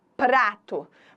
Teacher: Você ouve cada um dos sons, eles não se fundem em um único som